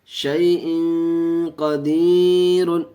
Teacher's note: یا ساکن سے پہلے زبر ہے اس لیے جلد پڑھیں گے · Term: یا لین